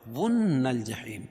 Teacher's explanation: واو کو نون میں سختی کے ساتھ کیونکہ نون کے اوپر تشدید ہے، اور یہاں غنہ بھی ہوگا کیونکہ نون مشدد ہے. نل جحیم، اور یہاں لام پڑھی جا رہی ہے، اس کے بعد حروف قمری کے 14 حرفوں میں سے جیم ہے.